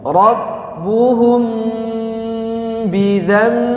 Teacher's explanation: Mim sukun ketemu huruf ba, ya, harus digunnahkan.